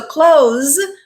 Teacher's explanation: it ends with the z sound which is a voiced consonant